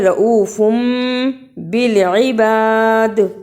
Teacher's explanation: فا پہ چھوٹی سی میم ہے، اسے اقلاب کہتے ہیں، اور اس میم کے فوراً بعد با آتا ہے، اسے تھوڑی دیر منہ میں رکھیں۔